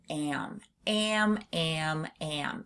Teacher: we're not just pushing that air through our mouth, we're also pushing it through our nose. So you can really feel it if you say am. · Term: nasalized a sound, nasalized A sound